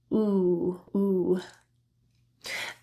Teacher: the back of the tongue is raised quite high and close to the pallet on the roof of the mouth and essentially the most important thing is that the lips are fully rounded